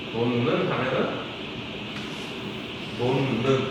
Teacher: 히읗 받침 뒤에 니은 어미가 오면 그러면 어떻게 돼? 얘는 플러스 마이너스 0 하면서 동화돼가지고 니은과 니은이 돼